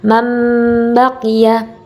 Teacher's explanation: Cara membacanya adalah dengan menyuarakan huruf nun sukun atau tanwin menjadi suara mim dengan merapatkan dua bibir dan mendengung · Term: iklab